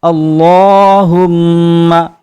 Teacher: میم مشدد پر ایک الف کے برابر غنہ کیا جاتا ہے